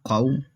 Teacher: فا یا زبر فی فو فی قاف واو زبر قو، یہ موٹا ادا ہوگا کیونکہ حروف مستعلیہ میں سے